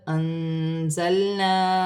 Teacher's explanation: نون ساکن میں اخفا ہوگا، زا حرف اخفا میں سے ہے